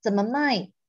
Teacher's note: mai is a fourth tone. So this is selling, not buying. Selling. Buying is a third tone.